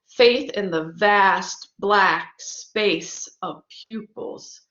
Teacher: you notice there's a slowing down when you have these accented syllables one after the other especially where you're not expecting it to happen so the idea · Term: spondee